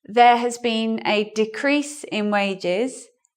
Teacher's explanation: decrease is in the noun form so looking at our rule where is the stress here on the first syllable we show you the stress by the circle and the unstressed